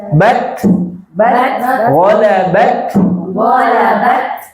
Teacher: Suaranya tertahan. Bat. Kemudian di akhir ada napas.